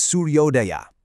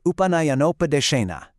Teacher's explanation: In Guna Sandhi, when an a meets an u, they combine forces to form an o sound.